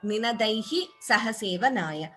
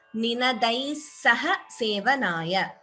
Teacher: Optionally, you could take a pause after Ninadaihi. If you choose to pause after Ninadaihi, then we chant the Visarga completely.